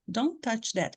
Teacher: porque nós temos dois Ts um em seguida do outro então a gente fala uma vez só · mesmo se não fosse um t aqui ele iria desaparecer porque ele é um som Stop Então se vier uma consoante depois a gente já não ouve esse esse primeiro T